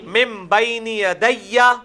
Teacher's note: یہ وہی اقلاب آ گیا، نون ساکن کے بعد با ہے تو نون میم میں بدل جائے گا